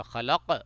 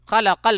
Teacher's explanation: یہاں پہ وہی خلقہ آ گیا لیکن یہاں پہ قلقلہ نہیں ہوگا کیونکہ یہاں پہ وقف نہیں کریں گے. خلقل پڑھیں گے تو اس قاف پہ قلقلہ نہیں ہوگا.